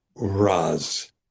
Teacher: add your S and you get Z as a result uh the voicing of the sibilent is maintained after a voiced uh aspirate